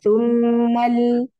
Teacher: Oh, berarti dari mimnya, Dari mimnya, bunyi fathahnya jangan terlalu dibuka rahangnya.